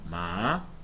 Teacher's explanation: It's like a question kind of intonation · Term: rising tone